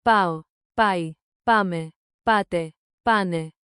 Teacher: Keep the accent on the first syllable. Chain them smoothly. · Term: Stress